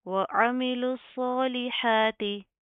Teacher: आइन की आवाज़ को आपने प्रॉपर वाज़ह करना है, हलक से अदा होगा